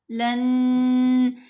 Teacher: تو ابھی جب لام اور نون کو ملایا جائے گا، لن، یہ غنہ ہے۔ غنہ کی مقدار 2 حرکات کی مقدار کے برابر ہے